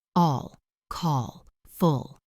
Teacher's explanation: The dark L is made deep in the throat. It is almost a vowel sound